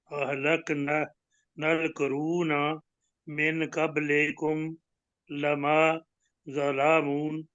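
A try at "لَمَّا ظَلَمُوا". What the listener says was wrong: नहीं, मीम के ऊपर शद है ना जी, लम्मा ज़लमू।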